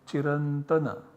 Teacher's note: This becomes an input for anuswarasya yai parasavarnaha, and so this anuswara is substituted by the savarna of the para sound, that is ta, and the nasal parasavarna of ta is na. So we have chiran and tana, and so we get chirantana as the desired output generated.